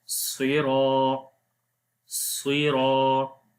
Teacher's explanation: And there is alif madda is coming. Alif is coming after the ra, so we long here 1 second.